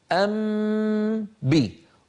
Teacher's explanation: أطبق الشفتين على ميم وأمط غنتها ثم أجافي الشفتين عن باء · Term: إخفاء